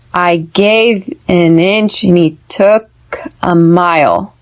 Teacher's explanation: gave inch took mile these are the stressed words